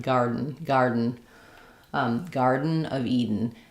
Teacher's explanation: almost no vowel for both garden and Eden. If I had to write it as a vowel, I'd write garden or garden, but try to go very quickly from your flap to your N, garden, Garden of Eden.